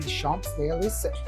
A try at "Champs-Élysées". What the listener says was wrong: The P is silent. Completely silent. So think like CHANSE.